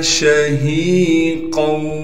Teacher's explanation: شہیقا شین میں تفشی یعنی شین کی آواز کو صاف کر کے نکالنا ہے۔ ہا کے بعد یا مدہ ہونے کی وجہ سے ہا کو ایک الف کی مقدار کھینچیں گے · قاف کو آگے واو سے ملائیں گے، یہاں ادغام ہوگا کیونکہ قاف پر تنوین ہے